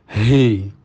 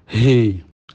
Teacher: Ini banyak pembaca lengah ya, bahwa makhrajnya ha itu di pangkal tenggorokan paling dalam. Dan disertai dengan angin. He, dari dalam disertai dengan angin.